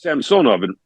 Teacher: In Russian, the middle syllable is accented.